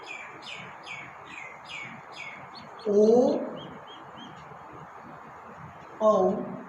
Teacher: ओ औ का उच्चारण कंठोष्ठ से होता है